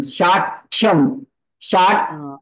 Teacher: While pronouncing this word, you are not just pronouncing Th, you are even using T in between.